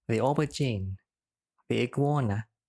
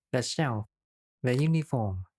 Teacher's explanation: it is pronounced as /ðiː/ when it goes before a vowel sound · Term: strong form